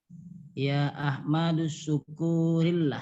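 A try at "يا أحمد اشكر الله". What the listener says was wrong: Bukan syukur tapi Ya Ahmadus kurillah. Ahmadus kurillah. Laisa suku. Duskuri. Ya, laisa su. Ya Ahmadus.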